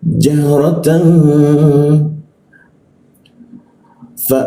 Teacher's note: Ketika an bertemu dengan fa itu maka didengungkan, ditahan dua ketukan. Jahratan ya, dua ketukan, dengungnya di huruf fa.